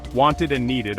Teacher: This is because adding just /t/ or /d/ would make the word difficult to pronounce. Wanted and needed are pronounced with this id sound. The /t/ in want and the /d/ in need make it necessary to add an extra syllable for clarity and ease of pronunciation.